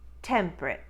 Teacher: another glottalized t at the end of temperate making it temperate remember it's only t's in the middle and